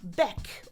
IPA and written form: bɛk (back)